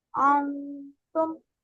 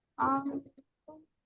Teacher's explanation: नून की आवाज आनी नहीं चाहिए, ठीक है, छुप जाएगी। आपकी जबान ऊपर तालू के साथ टच नहीं होनी चाहिए जहां नून की आवाज आती है।